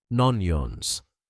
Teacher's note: The O from no blends into onions.